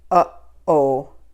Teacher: a glottal, which is like a quick stop or a quick cutoff. So like uh-oh, so it's going to have a quick stop.